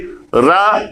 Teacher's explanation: जब हम रा का उच्चारण करेंगे तो हमारी जिह्वा लुढ़कते हुए मूर्धा को स्पर्श करती है, इसीलिए इसको लुंठित या प्रकंपित कहते हैं।